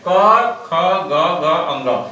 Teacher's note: क तो कंठ से आवाज निकलता है